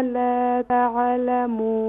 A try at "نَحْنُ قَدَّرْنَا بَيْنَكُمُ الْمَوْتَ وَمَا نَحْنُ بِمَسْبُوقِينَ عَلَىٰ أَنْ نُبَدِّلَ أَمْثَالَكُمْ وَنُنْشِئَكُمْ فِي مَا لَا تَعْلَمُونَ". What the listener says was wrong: Control کریں, نہیں ہوگا تعلمون, ابھی بھی قلقلہ ہو رہا ہے لیکن دوبارہ اس کی پریکٹس کیجئے گا.